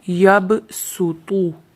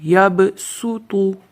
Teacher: اس کو صاد کی آواز نہیں نکال سکتے، اس کو سین کی آواز نکال کے پڑھنا ہے